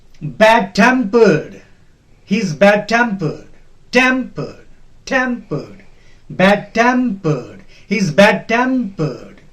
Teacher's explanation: Temp will be stressed. The second part will be stressed.